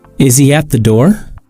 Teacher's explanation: Listen as the voice goes up at the end of the sentence. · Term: rising intonation